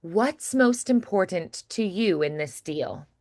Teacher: And I do think this phrase is one that it has so many like D's and T's and sounds that kind of stop the airflow. It's one that's a little bit harder to make feel more fluid and flowing, but we're going to try.